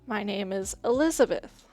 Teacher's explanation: Elizabeth is important to the sentence, so I say Elizabeth loudly and clearly. Something like my or is not stressed.